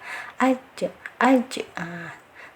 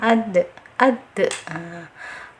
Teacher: Jadi tetap walaupun dipantulkan, tetap harus ada sifat syiddahnya, ditahan dulu aj, baru diberi tambahan pantulan atau qalqalah ya, aj, aj. Sebab banyak yang keliru sekali ketika pengucapan huruf qalqalah, banyak yang tidak tahu ternyata di situ ada sifat syiddahnya.